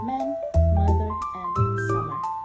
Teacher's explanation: To make this sound, both lips are closed and the air passed through the nose.